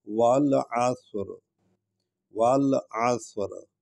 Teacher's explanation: عین کو ہم حلق سے ادا کر رہے ہیں